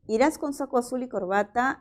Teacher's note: es una pregunta que presenta tono final ascendente